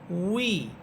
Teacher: সম্পূর্ণ আওয়াজটা শুরু হবে ঠোঁট থেকে, মুখ থেকে না।